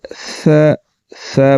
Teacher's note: ہلکا سا زبان کو دانتوں کے نیچے لا کر باریک پڑھ دیں گے